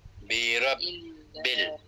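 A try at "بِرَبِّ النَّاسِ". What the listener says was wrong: bin masuk masuk masuk masuk bin terus nah bukan bil nah masuk nun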